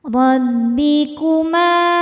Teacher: Ma hukumnya mad thabi'i dzahiri karena ada alif didahului harakat fathah. Cara bacanya dipanjangkan dua harakat.